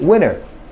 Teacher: well the word was Winter however the te was absent